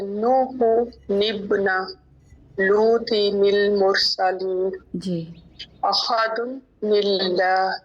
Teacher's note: तो तनवीन के नून को जेर देंगे। जो हमजा वसल के दरमियान में होगा।